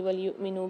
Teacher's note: وَلْيُؤْمِنُوا میں حمزہ پر سکون آ رہا ہے تو یہاں پر ہم جھٹکا دے کے پڑھیں گے